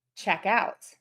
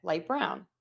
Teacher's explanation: we're stressing that second word, that second syllable, and that is really helping your rhythm